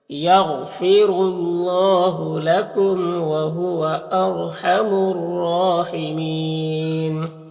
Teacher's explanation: یغ غین حروف مستعلیہ میں سے پر پڑھیں گے، را کو پر پیش ہے، را کو پر پڑھیں گے، اور اللہ کے لام سے پہلے را کو پر پیش ہے، تو اللہ کے لام کو پر پڑھیں گے۔ کھڑا زبر ہے، ایک الف کے برابر کھینچیں گے، میم میں اظہار شفوی ہوگا، اور یہاں پر را ساکن سے پہلے الف کے اوپر زبر ہے، تو را کو پر پڑھیں گے۔ · یہاں پر الف لام حروف شمسی را کے شروع میں ہے، تو الف لام دونوں کو نہیں پڑھیں گے۔ را مشددہ کے اوپر کھڑا زبر ہے، تو را کو پر پڑھیں گے اور ایک الف کے برابر کھینچیں گے، اور یہاں پر وقف کریں گے تو مد عارض وقفی ہوگا، تو اس طرح سے پڑھیں گے۔